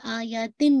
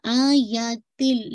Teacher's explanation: completely sound of the تنوین مرج ہوگا یہ لام میں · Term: ادغام